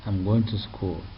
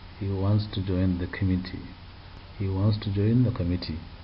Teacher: Falling tone, because these are declarative sentences.